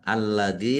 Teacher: lamnya ada tasdidnya dibaca dobel ya ditekan biar tampak dobelnya. Dzal kasrah ya sukun mad thobi'i panjang dua harakat.